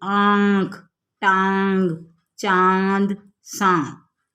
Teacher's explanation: जिन वर्णों पर चांद बिंदु लगा रहता है, उनके उच्चारण में गले से आने वाली हवा नाक और मुख से दोनों से बाहर निकलती है। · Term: अनुनासिक